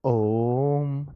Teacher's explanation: ये ओम ओ में बहुत ज्यादा टाइम ओ है ना जैसे हम पढ़ेंगे नॉर्मल तो ओ पढ़ेंगे यहां ओम तो अधिक समय लगता है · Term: प्लुत स्वर